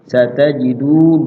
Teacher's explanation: Satajidu adalah mat tabi'i atau mat asli, memiliki panjang dua ketukan ya. Tidak lama-lama dua ketukan, sekedar di ayun udah mat tabi'i.